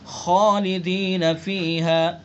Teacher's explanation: خا پر پڑھیں گے چونکہ حروف مستعلیہ میں سے ہے